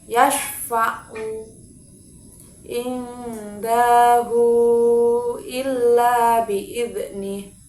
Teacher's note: Kemudian mat silah tawilah, artinya hak domir yang bertemu dengan hamzah yang dibaca panjangnya 4 atau 5 harokat ketika wasol dan berubah menjadi mati ketika terdapat waqaf